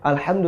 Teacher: alhamdu Tadi saya sudah bilang e sudah katakan bahwa makhrajnya sama makhrajnya adalah di wastul halqi atau di e pertengahan tenggorokan alamin Ain juga di samping Ha